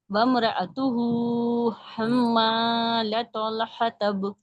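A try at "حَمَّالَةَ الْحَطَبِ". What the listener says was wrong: लतल, ता को हम मोटा क्यों कर रहे हैं, ला तल, लतल, लतल। हतब, हतब, ठीक है।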